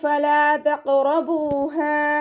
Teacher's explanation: ലാമിൻ്റെ കൂടെ അലിഫ് മദ് വന്നിട്ടുണ്ട്, 2 കൗണ്ട് നീട്ടിക്കൊടുക്കുക കേട്ടോ. ഖാഫ് ഇസ്തിഅലാൻ്റെ ലെറ്ററാണ്, ഉയർത്തിയിട്ട് ഉച്ചരിക്കണം.